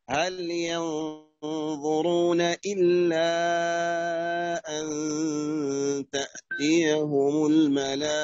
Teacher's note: مد واجب، مد متصل، لأن الألف والهمزة في كلمة واحدة